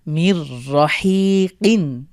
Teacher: নুন সাকিনের পরে র এসেছে, আমরা মিলিয়ে গুণনা ছাড়া পড়ব। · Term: গুণনা ছাড়া মিলিয়ে